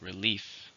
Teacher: 2 syllables, stresses on the second